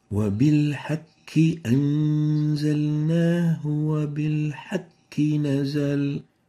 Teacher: weakening the tafkhim of the qaf, resulting in replacing it with a kaf. As we have just mentioned, the kaf is more muraqqaq, having less tafkhim.